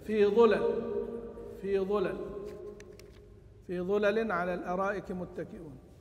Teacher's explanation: بضم الظاء، واقصر اللام